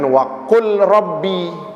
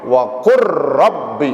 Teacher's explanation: Lamnya yang mati itu enggak berbunyi lagi, yang bunyi huruf ra setelahnya ya. Jadi bacanya jangan waqul rabbi, lamnya hilang, langsung masuk ke ra-nya, waqur rabbi. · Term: idgham